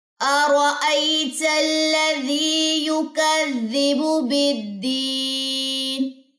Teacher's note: را کو موٹا رکھنا ہے اور یہاں پہ یا مدہ ہوگی. · با کی پیش کو آپ نے لمبا ہونے سے بچانا ہے, اس کو لمبا نہیں کرنا